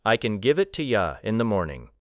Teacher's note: A learner may expect every word to receive equal clarity. But a natural speaker will probably emphasize give and morning. The other words may be shortened.